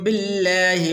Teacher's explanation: یہاں پر لفظ اللہ کو پر کر کے نہیں پڑھیں گے